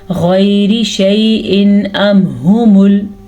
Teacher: इन दोनों जगह पे इजहार होगा, किसी किस्म का कोई गुन्ना नहीं होगा।